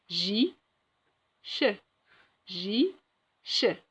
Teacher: l'air passe entre les lèvres et les dents pour ces deux sons